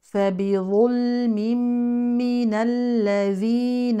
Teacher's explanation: التنوين يليه ميم كما مر معنا ادغام كامل بغنه